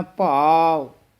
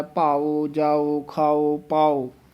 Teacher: ਭਾਵ ਊੜਾ ਬੰਦ ਮੂੰਹ ਵਾਲਾ ਹੈ। ਭਾਓ ਅਗਰ ਉਚਾਰਨ ਕਰਾਂਗੇ ਊੜਾ ਖੁੱਲੇ ਮੂੰਹ ਵਾਲਾ ਉਚਾਰਨ ਹੁੰਦਾ ਹੈ।